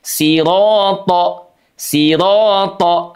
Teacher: Diayun saja, cukup 2 harokat, 2 gerakan atau 1 alif.